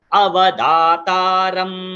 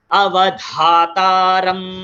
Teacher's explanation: द जो है वो अल्प प्राण अक्षर है, उसके बाद जो है धातारम ये महाप्राण है।